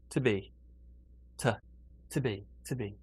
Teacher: normally the to here is not a oo sound, it's more of a t sound.